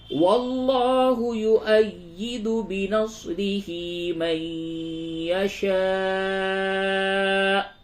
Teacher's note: ادغام مع الغنہ ہوگا، نون ساکن کے بعد یا ہے